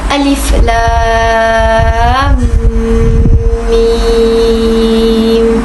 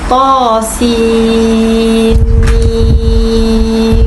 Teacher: Hukum bacaan mad lazim harfi musaqqal ialah wajib membaca dengan kadar panjang 6 harakat.